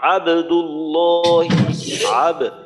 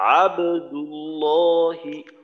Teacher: তো কলকলা করে এইভাবে আবদুল্লাহি, আব, বায়ের আওয়াজটা দুইবারে হবে, প্রথমবারে হবে তারপর আওয়াজটা বন্ধ হয়ে দ্বিতীয়বার আবার হবে